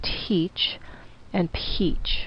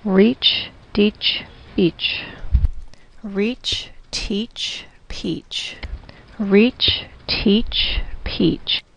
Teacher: in English teach and Peach the T and the P are aspirated so there's a bit of an H sound